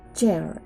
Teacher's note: This is a voiceless sound, or there is no vibration in the vocal cords.